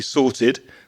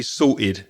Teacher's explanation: So from London, I wouldn't pronounce the T. I probably wouldn't say sorted. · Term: glottal stop